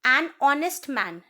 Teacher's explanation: h is a consonant, but the h sound is silent, so the o sound is coming.